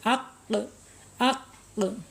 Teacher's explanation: Dia mempunyai sifat Qalqalah ya sifat yang tidak berlawanannya yang ini mempunyai sifat qalqala karena ketika diucapkan berharakat syukun pun di sininya akan mantul